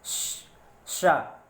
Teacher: इसका उच्चारण स्थान जो होता है वो तालु से होता है। जब आप कहोगे शा, तो जबान के बीच का जो हिस्सा है वहाँ से हवा होते हुए आपके तालु से टकराएगी और इसलिए इस शा को कहते हैं तालब्बी शा।